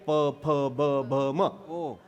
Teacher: आपल्याच ओठाला आपलाच ओठ लागला की अक्षर तयार होतं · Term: ओष्ठ